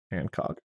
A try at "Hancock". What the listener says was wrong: Hey, there's no D in there. Hancock.